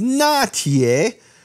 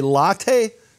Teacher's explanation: the L turns into an N and you add all kinds of strange sad tones because it's